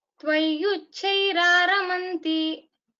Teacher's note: Tvayyuchairaramanti. The chakara, do not make it mahaprana, but give a stop there and get the dvitva sound.